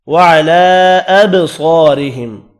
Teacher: با ساکن ہے، قلقلہ کرنا ہے، صاد پر پڑھا جائے گا، الف مدہ کو ایک الف کی مقدار میں کھینچ کر پڑھیں گے۔ · لام کے اوپر چھوٹی مد ہے، 3 الف کی مقدار میں کھینچ کر پڑھیں گے